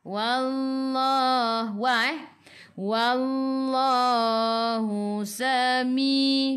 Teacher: Wallah sebelum Allah ada baris atas kena baca dengan tebal.